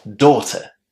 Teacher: the first syllable in this word is pronounced with a nice long o